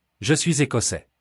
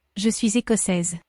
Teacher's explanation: The S at the end of the masculine écossais is silent, but the S at the end of écossaise is heard because it has an E after it.